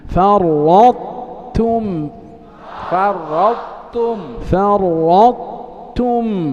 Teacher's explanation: كأنك ستنطق طاء فرط، لكنك تختم بتاء تم